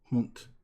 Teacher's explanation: in German, the D is almost pronounced like a T